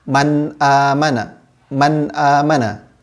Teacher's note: ketika membaca hukum kita hari ini nun sukun nya harus dibaca jelas man amanah dan tidak boleh untuk hai bunyi nun sukun nya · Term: izhar, hukum izhar